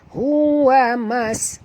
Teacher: bunyikan sofir pada sin